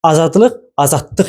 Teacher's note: d samiti t ilə, l samiti d samiti ilə, q samiti isə kar samit olan x samiti ilə əvəz olundu.